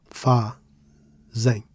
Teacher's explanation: As for fazem, it's disyllabic, so we stress the first syllable